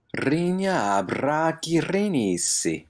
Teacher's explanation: Nice long trilled R sounds here.